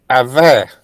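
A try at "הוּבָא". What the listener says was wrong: Careful with the first vowel. What is that vowel sound? Huva.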